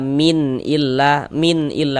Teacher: Jangan dibaca min dipanjangkan gitu, jangan, salah karena dia tidak didengungkan. Maka baca pendek saja. Min illa, la dibaca panjang.